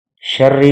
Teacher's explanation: شرری کا را جو ہے یہ باریک پڑا جائے گا کیونکہ را مشدد کے نیچے زیر ہے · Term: را باریک